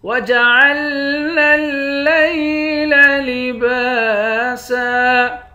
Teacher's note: با کے بعد بھی الف ہے، اس کو ایک الف کی مقدار کھینچیں گے، یہاں پر بھی لباسن نہیں پڑھیں گے، وقف کریں گے تو لباسا پڑھیں گے۔